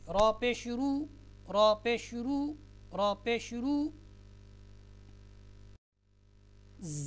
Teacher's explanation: रा के ऊपर अगर आपको पेश नज़र आती है तो क्या है, रा मोटी पड़ी जाएगी, आवाज़ में मोटापन होगा।